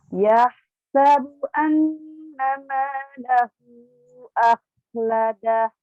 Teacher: Huruf H dan Kho-nya yang sukun ini harus keluar udaranya terus.